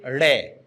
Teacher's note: ड और ढ इनको उत्क्षिप्त ध्वनियां कहते हैं। उत्क्षिप्त का मतलब है फेंकी हुई। जब भी हम इनका उच्चारण करते हैं तो हम उच्चारण करेंगे जैसे ड, तो जीवा है वो ऊपर से नीचे ध्वनि को फेंकेगी, और फेंकेगी तब ऐसा लगता है जैसे हथौड़े से चोट मार रहे हो।